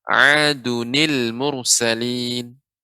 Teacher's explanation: ada nun yang sukun menjadi nun yang berharokat kasrah.